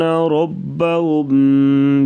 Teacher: را کے اوپر زبر, را کو پر پڑھیں گے اور ہم پہ غنہ کریں گے